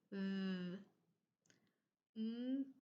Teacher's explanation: is pronounced by closing the lips it is a nasal you can feel it when you close your nose and it is voiced · It is a fricative and it is voiced. You feel that vibration?